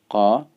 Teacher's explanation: makhrajnya di pangkal lidah bertemu dengan bagian langit-langit yang lunak, yang daging, yang tidak bertulang. Jadi dia qa.